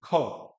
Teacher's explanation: महाप्राण वर्ण है, महाप्राण का मतलब है इसमें प्राणों का बल, या प्राण जो आपका बाहर है मुझसे वो थोड़ा ज्यादा आएगा।